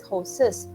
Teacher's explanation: But along with a word which ends in an s sound, it's a sibilant. When a word ends with a sibilant s sound, you can't have another s together. So you will insert a vowel, that is horses.